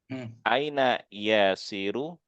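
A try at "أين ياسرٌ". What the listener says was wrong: Yasir ditanwin. Aina Yasirun.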